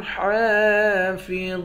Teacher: لفروجهم حافظون، حا کے اوپر کھڑا زبر ہے، کھڑے زبر کو ایک الف کی مقدار کھینچ کر پڑھتے ہیں